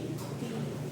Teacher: Ang nangyari kasi diyan letter T po siya kapag nasa baba. So yung T na niyan ah gagawin mo siyang aspirated. Huwag tense. Aspirated po siya.